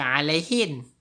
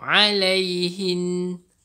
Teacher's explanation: bila ada nun syaddah ni, okey, kita akan bunyikan dengung dua harakat